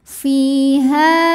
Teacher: Thobi'i dahahiri sebab ada ya sukun yang sebelumnya didahului baris kasrah cara membacanya huruf Fa ini kita panjangkan dua harakat saja